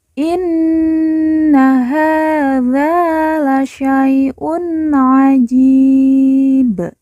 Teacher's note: Ji kita baca panjang dua empat atau enam harakat karena di depannya terdapat huruf ya sukun atau ya mati